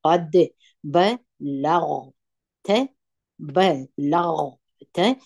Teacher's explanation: په زور وایي لام په زور د غین سره یوځای کړي غین د درنو تورو څخه دي په ډکه خوله وایي او تا په زور باندې وایي قد د دال قلقله مو · دغه غین باید د خې په اواز ادا نه کړي د خا یا خې د دې اواز باید ونه ویل سي